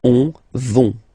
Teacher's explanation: remember, final T not pronounced, so you get this ON nasal here